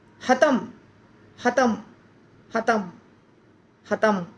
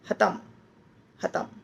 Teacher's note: म बोल रहे हैं पर म सुनाई नहीं देना चाहिए